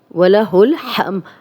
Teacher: हा की क्लियर आवाज़ आएगी, इसकी प्रैक्टिस करेंगे, 2 आँख वाली हा नहीं बनाएंगे